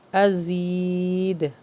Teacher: یہاں پہ جو زا ہے اس میں بزنگ ساؤنڈ آئے گا، شارپ پڑھیں گے اس کو